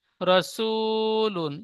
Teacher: লামের উপরে দুপেশ এসেছে, দুপেশটি তানবিন, তানবিন নুন সাকিনের আওয়াজ একই রকম হয়